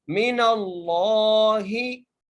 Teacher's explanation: रसूलुम मिनल्लाहि, मीम के नीचे ज़ेर है, नून को लाम के साथ मिलाकर पढ़ना है और यहाँ पर लफ्ज अल्लाह का लाम मोटा करके पढ़ेंगे। मिनल्लाहि, हा के नीचे ज़ेर है, ठीक है।